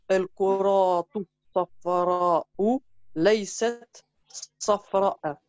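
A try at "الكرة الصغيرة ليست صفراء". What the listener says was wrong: Ouais, mais là, t'as relu deux fois Safra, donc t'as voulu peut-être dire El Koratus Sariratu. non, parce que tu avais prononcé El Koratus Safra'u. Donc c'est El Koratus Sariratu. Laïset, Safra.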